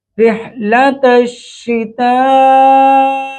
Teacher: تا پر ہر مد متصل ہے، بڑی مد ہے، اس کی مقدار 4 الف کے برابر ہوتی ہے، لمبا کھینچیں گے۔